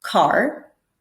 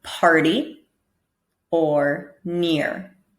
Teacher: we have another sound that we call the soft R, where really it's acting as more of a vowel sound